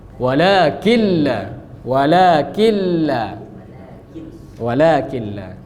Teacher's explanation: Dia nun hilang, nun masuk ke lam, lam jadi bertasydid, gunnahnya juga hilang. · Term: idgham bila gunnah